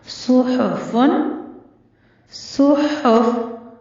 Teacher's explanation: साद भी हुरूफ मुस्तालिया में से है, पुर पढ़ा जाएगा, लेकिन हा को बारीक रखना है। और अदायगी के वक़्त जम्मा आ रही है तो दोनों होंठ आपके गोल होने चाहिए।